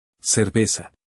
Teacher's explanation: Every S, every C before E or I, and every Z maps to the same plain S sound. Zero TH anywhere. · the letters C before E or I, the letter Z, and the letter S are all pronounced the same way, as a plain S.